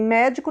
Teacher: Mé é a sílaba mais forte. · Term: sílaba tônica